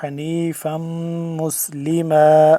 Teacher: حنیفم فا دو میم زبر فم، میم یہاں پہ مشدد ہے، اس پہ ہم کیا کریں گے، غنہ کریں گے